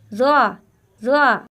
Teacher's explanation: जबान की नोक सामने वाले दांतों के किनारों पर लगेगी इस हर्फ का भी यही मखर है यानी जबान की नोक